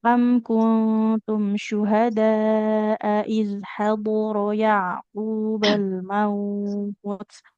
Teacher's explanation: Iz hador. Di sini dotnya tebal, hurufnya tebal, tapi antara dot dengan ro lebih tebal huruf dot.